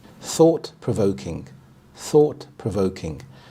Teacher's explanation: The primary stress is on the second part of the compound word, voke, so provoking